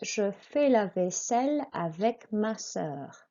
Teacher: a long S sound with a double S, and the L's are pronounced